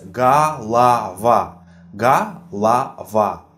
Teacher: Unstressed O is pronounced as A.